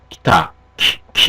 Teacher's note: 이 고모음 쪽에가 무성 자음하고 결합될 때는 무성화된다는 거죠. 그래서 예를 들어서 기타 같은 것도 모음을 갖다가 기타 이렇게 발음하시는 게 아니라 요 이 모음 부분 무성화 앞에 오면 이 무성음 T 앞에 오는 이 모음 부분이 없어지게 되죠.